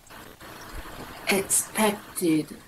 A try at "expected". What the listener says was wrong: Yeah, so if you think about expect, yeah, England expects, you've got that kt, yeah? So then you can't lose that in expected.